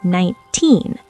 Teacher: The teen part is loud and long. The 9 is fast, 19. But for T numbers like 30 or 90, the spotlight is at the beginning. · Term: spotlight is at the end